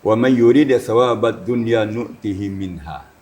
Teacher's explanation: Jadi kalau tentang keduniaan itu suaranya ninggi dikit.